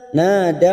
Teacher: dal sukun hati-hati bukan qalqalah kita tahan